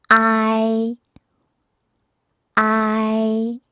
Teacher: 아인데 아를 강조해서 이로 넘어가면서 부드럽게 이어주는 그런 소리입니다